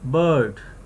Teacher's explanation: Lips position, relaxed lips, jaw half open, and the center of the tongue just slightly rising. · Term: central vowel